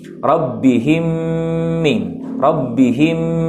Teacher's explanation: Jadi di sini seolah-olah ini adalah yang disebut dengan idgham mithlaini ya, ataupun idgham mutamasilain, karena sama hurufnya, itu huruf mim dengan huruf mim lagi. Yang pertama huruf mim yang sakinah sukun, dan yang kedua huruf mim yang berharokat kasrah. Maka sama hukumnya gunnah 2 harokat